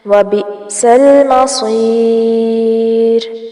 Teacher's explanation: وَبِئْسَ حمزہ ساکن ہے، اس وجہ سے جھٹکا آئے گا، لام ساکن کو نہیں ہلانا.